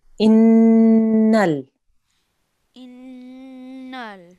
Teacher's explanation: We have a nasal sound and we hold on it for 2 seconds. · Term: noon gunna